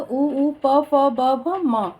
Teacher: प ध्वनि का उच्चारण स्थान ओष्ठ है। ओष्ठ ध्वनियां हैं उपो, मध्यन्याम, ओष्ठ।